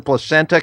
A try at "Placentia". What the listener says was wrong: You said placenta. Placentia.